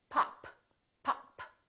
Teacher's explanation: stops look at this word pop pop look at my lips this is a stop because i'm stopping the airflow